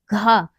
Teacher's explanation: ये इसका जब हम उच्चारण करेंगे तो हमारी जीभ जो है वो तालु से नहीं टकराएगी। घा जो हमारा है वो क्या है, ये कंठ से, कंठ से उच्चारित होता है।